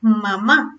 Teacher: que el velo del paladar caiga, que los labios se junten y que se produzca esta resonancia nasal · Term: sonido bilabial